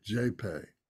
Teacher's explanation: So the J has a definite J sound, J. And some people will pronounce it like a G, a hard sound, a gay. But we pronounce it as a J